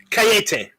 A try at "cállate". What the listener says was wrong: Cállate. You got the accent on the first day.